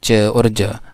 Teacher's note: पहले बिल्कुल स्टॉप की तरह रुक जाती है एयर और फिर एक फ्रिकेटिव की तरह निकलती है · अब जाहिर है जब च हम प्रोनाउंस करते हैं तो हमने जैसे बात की है कि च और ज में जो है वो पहले टंग जो है वो टच करती है थोड़े एल्वियोलर रिच पर भी और फिर पैलेटल पर भी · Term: एफ्रिकेट्स